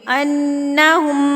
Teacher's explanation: انہم کے اوپر غنہ کریں گے تو یہاں پر جو ہے ناک میں آواز کو لے کے جائیں گے، نون کی آواز کو ناک میں لے کے جائیں گے